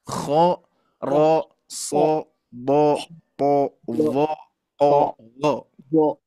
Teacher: bunyi O itu bukan dari mulut tapi pangkal lidahnya mengangkat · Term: huruf istilah, isti'la